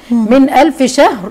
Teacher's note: نون ساكنه وبعديها همزه والهمزه من حروف الاظهار فبقول عليه اظهار حلقه